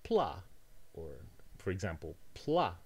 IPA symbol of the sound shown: pla